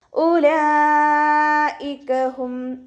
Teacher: മദ്ക്ഷരവും ഹംസയും ഒരേ വേർഡിൽ ആയിട്ടാണ് വന്നിട്ടുള്ളത് അപ്പോ മദ്് വാജി മുക്തസിലാണ് നിർബന്ധമായിട്ടും നാലോ അഞ്ചോ കൗണ്ട് നീട്ടി കൊടുക്കാട്ടോ